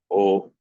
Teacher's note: A plus U is combined and becomes O, which is a combination of guttural and labial. So A plus U, A plus U is O, which along with akara, M, not M, becomes O.